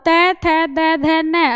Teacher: जीभ का जो आगे का हिस्सा है वो दांतों के साथ टच होता है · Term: दंत्य